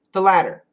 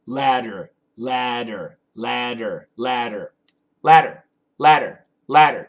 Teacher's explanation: Absolutely a flap T, and when we do a flap T, there shouldn't really be any vibration. There shouldn't be any vibration like in a D. But ladder, ladder, ladder, L-A-D-D-E-R, we can make that with vibration.